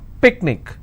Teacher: picnic I will stress on pick